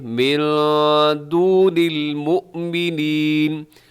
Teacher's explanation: نون ساکن کے بعد دال ہے تو یہاں اخفا ہوگا، آواز کو ناک میں چھپائیں گے